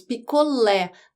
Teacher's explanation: o som da letra e é aberto nós dizemos picolé não picoler e mas acento agudo ou circunflexo